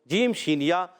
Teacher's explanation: یہ تین حرف زبان کے درمیان اور تالو کے درمیان سے ادا ہوتے ہیں